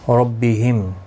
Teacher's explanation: میم ساکن رہے گا وقف کی صورت میں، اور ملانے کی صورت میں اظہار شفوی ہوگا